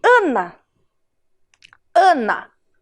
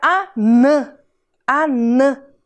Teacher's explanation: O ar saiu todo pela minha boca, um som oral.